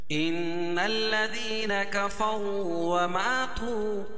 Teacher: میں غنہ کر رہا ہوں، اس میں ناک میں آواز کو لے کے جا رہا ہوں، اسی کو غنہ کہتے ہیں